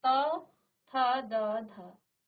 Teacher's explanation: दांत को स्पर्श करते हुए आपकी जीभ जो है इसका उच्चारण कर रही है